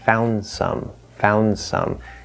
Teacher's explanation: instead of saying found some you can say found some found some that d just disappears